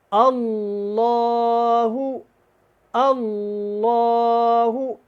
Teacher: اللہ والا لام ہے، اس کو آپ نے ہمیشہ موٹا ہی ادا کرنا ہے، اس کو باریک نہیں پڑھنا۔ اللہ، اللہ، آپ کی آواز کے اندر ہیوی پن، بھاری پن ہونا چاہیے جب اس کو آپ نے ادا کرنا ہے۔